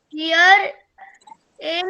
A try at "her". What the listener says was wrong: it is not here, it is her. it is not here, it is her.